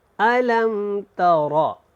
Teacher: تارا کو یہاں پہ تا کو لمبا نہیں کرنا، را کو موٹا پڑھیں۔